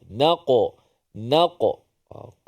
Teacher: Qalqalah pantulan qaf bila mati